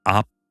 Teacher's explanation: In the 비읍 group, bilabial consonants in the coda are pronounced as an unreleased voiceless bilabial plosive, as in the English word up.